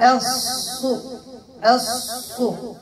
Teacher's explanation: ضم الشفتين علاش؟ لأن الصاد مضمومة